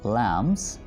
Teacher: यहाँ पर हम B प्रोनाउंस नहीं करेंगे, ठीक है, ये B यहाँ पर साइलेंट है.